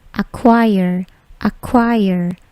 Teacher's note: Acquire, bukan acquire, tetapi acquire, acquire. Bunyi k-nya itu plosif tetapi tidak terlalu besar. Okay, acquire, acquire.